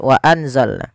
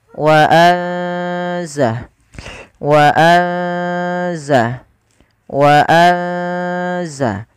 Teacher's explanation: ikhfa itu membaca di antara keduanya, yaitu dia menyamarkan saja, menyamarkan suaranya kepada huruf zai.